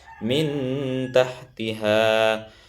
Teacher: Cara bacanya dengung juga, ya, dengung, tapi diikhfa. Kan ikhfa itu adalah samar. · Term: ikhfa hakiki